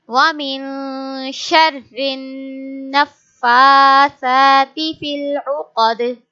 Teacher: So we will read dal with sukun sign. So when dal has sukun sign, it means we will make qalqala here, and qalqala means an extra voice